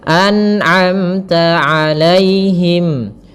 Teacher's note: Kemudian pada lafal amta ada mim mati bertemu ta izhar syafawi. Jelas muara mimnya.